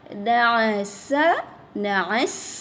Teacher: Safir dan hams pada sin